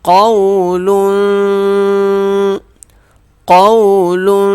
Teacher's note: قاف کو واو کو کھینچیں گے نہیں قاف کو موٹا پڑھیں گے